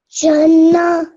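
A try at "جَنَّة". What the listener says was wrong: Okay, the only thing you did was you didn't stretch the noon, sorry, long enough. Jannah.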